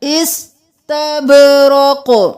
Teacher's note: با قلقلہ، قاف قلقلہ، سین کو ساکن رکھنا ہے، استبرق نہیں کرنا.